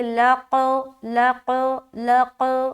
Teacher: لام کو قاف سے ملاتے ہوئے قلقلہ کریں گے